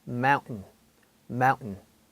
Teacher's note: 미국에서는 이 NT를 뭐가 마치 목구멍에 걸렸듯이 발음을 합니다